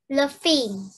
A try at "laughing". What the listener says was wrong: Not er, but long laughing.